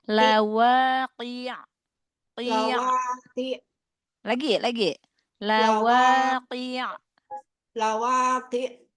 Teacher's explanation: Jangan syiddah, dialirkan di huruf ainnya.